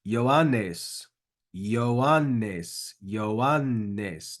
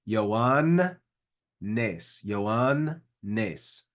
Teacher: Notice the double nu in there. You should try to get both of those nus.